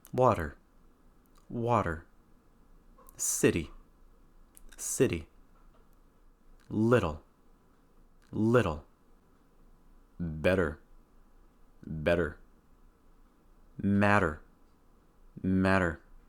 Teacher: the fast d sound occurs when the letter T actually sounds like the letter D pronounced very quickly that means that you can either raise the tip of your